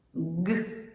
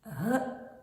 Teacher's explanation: Ниточку розтягнути не вдається звук затримується глибоко в роті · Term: звук Ґ